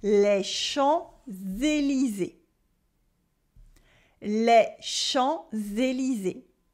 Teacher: we have a nasal on in les Champs-Élysées